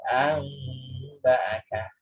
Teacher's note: Meskipun namanya iklab, bacanya tetap ada gunnahnya. · Tetap ada mim kecilnya itu. Nun sukunnya berubah jadi mim.